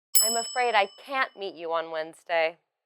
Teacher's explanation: you should say it with a falling intonation to show your regret